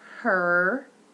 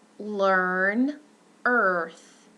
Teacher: it's a central mid tense, but it's rounded. It occurs in stressed syllables only. The duration is longer and more tense as compared to the less tense, I guess, pair, if you will.